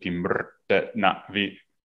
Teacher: it has syllabic R's and M's, like where the consonant makes up the entire syllable